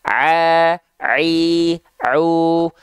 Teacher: Sedangkan huruf ain dilafalkan dari tengah tenggorokan.